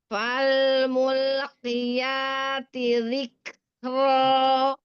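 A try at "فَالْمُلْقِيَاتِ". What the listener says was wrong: Fal mulqi. Jangan mulk. Nggak boleh Fal mulqiya. Jadi lam ketika nempel di pas mulki ya, mul. Lamnya itu nempel depannya doang. Jadi bagian belakang jangan keburu diangkat walaupun setelahnya huruf qaf ya. Jadi lamnya jangan jadi tebal. Mul tetap.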